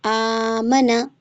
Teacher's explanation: تو پھر کیسے پڑھیں گے؟ آمنا، منا کو جلدی پڑھنا ہے اور آ کو کھینچنا ہے